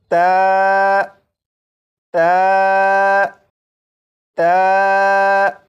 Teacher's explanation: ता को पढ़ने के लिए ज़बान की नोक को ऊपर सामने के 2 दांतों की जड़ से लगाकर जब पढ़ेंगे तो ये हर्फ ता बिल्कुल सही पढ़ा जाएगा